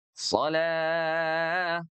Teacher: So-nya dibaca menebal, lahnya dibaca 4 harokat. Atau boleh juga 2, boleh juga 6.